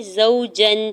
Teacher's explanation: واو ساکن سے پہلے زا کے اوپر زبر ہے، واو لین ہو رہا ہے، نرمی سے موڑتے ہوئے ادا کریں گے۔ جیم کے اوپر دو زبر کی تنوین اور اگلے حرف میں اگلے لفظ کے شروع میں غین حروف حلقی ہے تو یہاں پہ اظہار حلقی ہوگا، یعنی جیم کی تنوین پر غنہ یا اخفا نہیں کریں گے بلکہ ظاہر کر کے پڑھیں گے۔